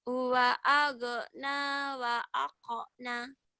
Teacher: Itu G-nya nggak boleh ada kolkolah.